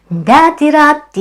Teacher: Notice how 'dati-' ends with a vowel sound, so it flows naturally into 'rati'.